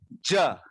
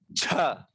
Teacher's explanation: महाप्राण अक्षर छ और झ, जिसमें सांस बाहर निकलती है